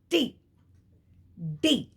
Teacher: you have alveolar plosives alveolar Ridge you say T D now the tongue is actually touching there's a close contact the tongue touches the alveolar Ridge it's a close contact so you are saying T D these